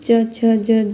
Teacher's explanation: ये च वर्ग है, च, छ, ज, ज है, इनका उच्चारण स्थान तालु है